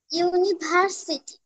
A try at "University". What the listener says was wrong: ভার না, বলো ইউনিভার্সিটি।